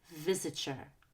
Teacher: we use blending and we make that TY a CH